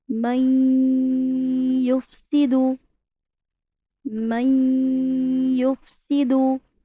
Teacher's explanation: ملانا بھی ہے، غنہ بھی کرنا ہے. ٹو ڈفرنٹ ورڈز کو ملانا ہے اور غنہ بھی کرنا ہے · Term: ادغام با غنہ